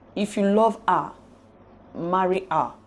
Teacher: The tone will rise on the syllable love, being the last stressed syllable in the first tone group, and fall on the syllable ma of marry, being the last stressed syllable of the second tone group.